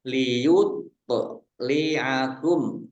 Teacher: tok sukun bacaan kolkolah dibaca memantul ditampakkan pantulannya